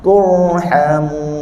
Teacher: Ra yang cantik, ra fasih kita bergetar sekali je, lepas tu kita tahan dia.